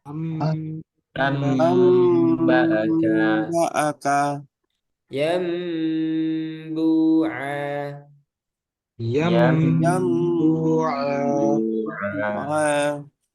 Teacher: Itu simpel ya untuk iklab. Jadi intinya dia nunnya ini dirubah ke suara mim kemudian ditambah gunnah.